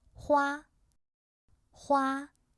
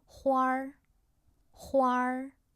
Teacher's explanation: A little bit R pronunciation after 花, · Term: retroflex final